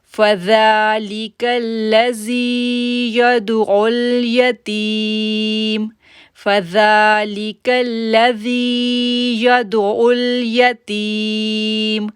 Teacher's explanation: زال کو ہم نرمی کے ساتھ پڑھیں گے اور 2 سیکنڈ کے لیے کھینچیں گے کہ اس کے اوپر کھڑی زبر ہے۔